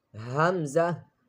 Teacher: Hamza is also same like Ha, pronounced from the lower part of the throat, which is near to the chest.